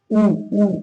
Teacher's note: ओष्ठ वर्ण ऊ ऊ बोल के देखिए। ऊ जो है मुंह थोड़ा बाहर को ओठ निकलते हैं, वो ओठ से बोला जाता है, इसीलिए ऊ बड़ा ऊ हो जाएगा।